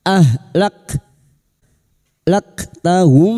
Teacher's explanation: huruf kaf memiliki sifat hamas dan siddah, maka pada saat disukun bunyinya ahlaktahum. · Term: Kaf sukun